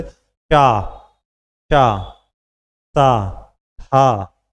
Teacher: वायु रगड़ खाके आएगी गर्म निकलती है इसलिए उष्म